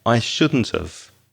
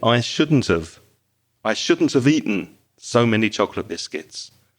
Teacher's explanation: That have becomes very weak. And the t at the end of shouldn't joins with the vowel sound of, which is have.